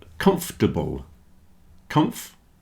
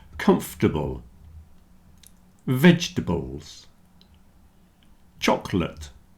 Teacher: comfortable vegetables and chocolate have lost their middle syllable at least for most people so comfortable comforable you see the o r in the middle